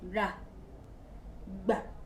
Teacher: Ẹ rí pé gbogbo àwọn ọ̀rọ̀ tí mò ń sọ yìí, ó jẹ́ àwọn ọ̀rọ̀ tí ó ń lọ ìsàlẹ̀. Àmì ohùn ìsàlẹ̀, low tone.